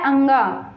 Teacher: कंठ और नासिका दोनों के सहयोग से बोला जाता है अंग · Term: कंठ नासिका